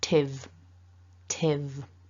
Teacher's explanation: your bottom lip and your top teeth are coming together and we want some vibration there